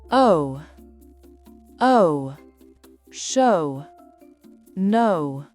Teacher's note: on commence par un O et on finit avec les lèvres serrées.